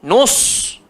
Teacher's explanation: Dan sad, sifat dia tebal, jangan nus, nanti jadi sin.